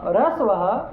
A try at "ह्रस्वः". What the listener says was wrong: थोड़ा ह का उच्चारण हल्का सा करो